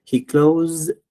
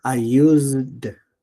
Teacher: la Z tiene un sonido de un como vibrante, ¿no? Vibrante, como de un mosquito que está en el oído, zumbando